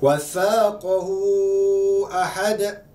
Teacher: Dibaca dengan kadar 4 atau 5 harakat ketika sambungkan bacaan. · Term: mat silah tawilah